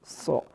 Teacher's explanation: زبان کی نوک کو نیچے والی دانتوں کی جڑ کے ساتھ لگائیں گے تو سواد ادا ہوگا یعنی سو۔ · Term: صاد